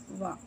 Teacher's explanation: దంత్యోష్టము దంతము పెదవితో పలికేవి